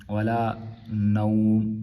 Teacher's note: چونکہ یہاں پہ ہم وقف کر رہے ہیں تو جو تنوین ہے دو پیش کی وہ گر جائے گی